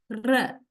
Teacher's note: Complete closure, the airflow is completely blocked, and there is this rapid vibration of the active articulator against the passive articulator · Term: Trill, trill